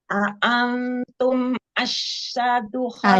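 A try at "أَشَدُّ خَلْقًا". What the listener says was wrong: Asyaddu, dal yang tasdid, bukan shin ya. Asyaddu.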